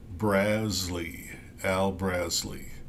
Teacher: like BRZ like jazz and then Lee Le and uh it the accent is on the first syllable